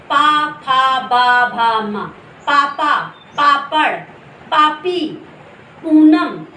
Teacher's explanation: हमारे होंठ जब दोनों टकराते हैं तो ये आवाज बाहर निकलती है, ये वर्ड बाहर आते हैं। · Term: ओष्ठ